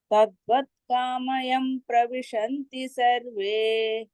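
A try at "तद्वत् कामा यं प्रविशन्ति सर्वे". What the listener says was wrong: కామాయం కామాయం అక్కడ మ కి దీర్ఘం ఉందండి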